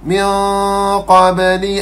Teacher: Ikhfa hakiki. Qaf adalah huruf istilak. Dengung kena tebal. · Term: ikhfa haqiqi